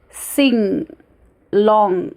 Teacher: It is produced from back of tongue. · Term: ng sound